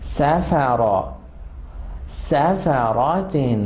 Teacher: سافا، ایک تو سا کو مزید وسلنگ ساؤنڈ کے ساتھ پڑھیں گے، فا مزید شارپ ہوگا. سافا، را کو ایک تو فل ماؤتھ پڑھنا ہے، ٹھیک ہے، اور لپس یوز نہیں ہوں گے